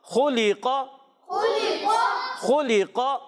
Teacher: خا اور قاف موٹا، لام باریک رکھیں گے · قاف میں قلقلہ بھی کریں گے، آواز لوٹ کر آئے گی